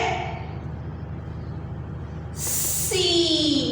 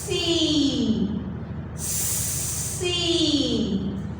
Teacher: سین کو بھی ہم نے اب سیٹی کی آواز کے ساتھ پڑھنا ہے